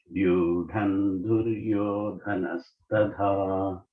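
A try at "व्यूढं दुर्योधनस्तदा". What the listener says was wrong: Tada, the alpa prana.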